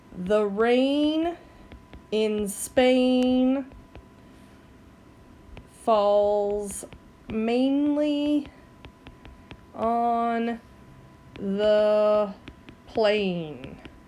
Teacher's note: you've got that AI sound that keeps going on and on throughout that sentence. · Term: assonance